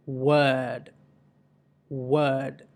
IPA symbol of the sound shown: ɜː